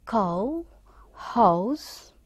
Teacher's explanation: This is a rising vowel, and it is from between half close to half open, and it is moving towards up. It's a glide from a central unrounded vowel between half close and half open to a centralized back rounded vowel just above the half close position.